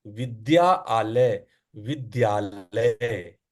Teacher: इसमें आ अंतिम में है और जो शुरुआती शब्द है आ आ है तो आ आ जोड़ के आ हो गया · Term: स्वर संधि